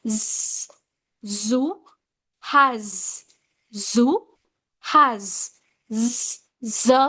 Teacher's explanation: When you say z, the sound, you can sense the friction over your vocal cords in the neck. That's why we given the word fricatives to these sounds.